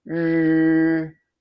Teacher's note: Say it using a falling affirmative tone